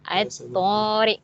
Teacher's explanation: At-tariq ni jelas kita sebut bukan pada lam tu, pada huruf syamsiah tu sendiri iaitu huruf ta. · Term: Alif lam syamsiah